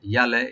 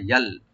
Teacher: লামে যে সাকিন আছে এখানে আমরা কলকলা করব না, ইয়ালে এরকম না, ইয়াল, আইনটাকে ওপেন করে রাইট দিয়ে পড়বো।